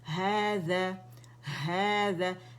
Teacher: الف صغیرہ ہا کی آواز کو کھینچ رہا ہے